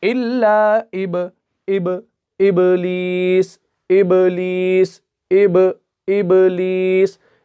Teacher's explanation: تو اس آیت کو آپ غور سے دیکھیں، جو با کی مثال ہمیں ملتی ہے سورہ بقرہ کے اندر آیت نمبر 34 کے اندر، قُلْنَا لِلْمَلَائِكَةِ اسْجُدُوا لِآدَمَ فَسَجَدُوا إِلَّا إِبْلِيسَ۔ ابلیس، با کو ہم ہلکا سا جھٹکا دے کر پڑھتے ہیں، کیونکہ با یہاں پر جو ہے قلقلہ کا حرف ہے اور اس کے اوپر ساکن بھی ہے